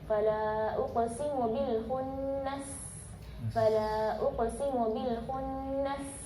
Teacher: Jadi ketika pelafalan huruf sin, uqsi, hamsnya begitu jelas, shafirnya pun begitu jelas. Apalagi ketika sukun, fala uqsimu bil khunnas, fala uqsimu bil khunnas.